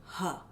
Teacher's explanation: it's kind of just a release of air from the throat so as far back as you can imagine as far down